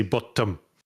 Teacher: they insert a little glottal stop into like when there are two consonants together.